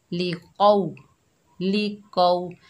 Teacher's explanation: कौफ के ऊपर ज़बर है, आगे वाव साकिन है, ये वाव लीन है, इसको नरमी और जल्दी से अदा करेंगे। कौफ हरूफ इस्ताला में से है तो मोटा अदा करेंगे।